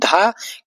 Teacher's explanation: धा आपका घोष महाप्राण व्यंजन है